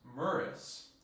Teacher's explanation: with that s becoming an r between the u and the i